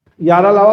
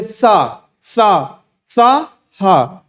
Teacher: बहुत सारी हवा निकल रही है, तो ये क्या है? महाप्राण है।